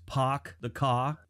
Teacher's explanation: wealthy British Traders started to speak without the r sound in their words